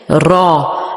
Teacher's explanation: र जब जब हम पढ़ते हैं तो इसको भी हम एज अ सेपरेट लेटर जब पढ़ते हैं तो थोड़ा मोटा और होठों को थोड़ा सा गोल करके अदा करते हैं। · را جب ہم پڑھتے ہیں تو اس کو بھی ہم ایز اے سیپریٹ لیٹر جب پڑھتے ہیں تو تھوڑا موٹا اور ہونٹوں کو تھوڑا سا گول کر کے ادا کرتے ہیں، را. جبکہ لام جو ہے اس کو الگ ایز اے حرف پڑھتے ہوئے ہم خوب ہونٹوں کو پھیلا کر لام، لام نہیں بلکہ لام، لام، اس طرح سے ادا کرتے ہیں.